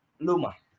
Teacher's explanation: Last child on the last of the table 2, she can produce the phoneme R voiced post alveolar approximant. She changed it into L voiced alveolar lateral from Ruma become Luma.